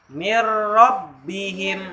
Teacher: Jadi bacanya harus melebur juga, tidak ditahan, tidak didengungkan. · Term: idgham bilagunnah, Idgham bila guna